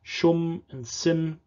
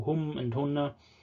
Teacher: have s sounds in these third-person pronouns also in the singular whereas other semitic languages like arabic and hebrew and also aramaic have h sounds